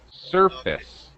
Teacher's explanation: First syllable stress. Surface. The f part is like a schwa sound, just an surface.